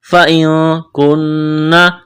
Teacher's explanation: فَإِن كُنَّ، کاف کو باریک کرنا ہے، نون مشدد ہے، آواز ناک میں چھپائیں گے، غنہ کریں گے